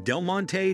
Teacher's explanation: a great number of people split it into two syllables instead of three. This changes the pronunciation from Del-mon-tay to Delmont.